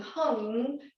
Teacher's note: that NG at the back of the soft palate where the tongue presses back there is really important it's going to send the vibration up into the pineal and